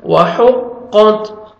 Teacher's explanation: قاف کو موٹا کر کے پڑھیں گے تاکہ لائٹ سے ساؤنڈ آئے گا، وَحُقَّتْ، ہا پڑھنا ہے ہا